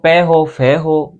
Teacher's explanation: वे वर्ण जिनका उच्चारण करते समय प्राणवायु होठों के माध्यम से मुख से बाहर निकलते है उनको ओट वर्ण कहा जाता है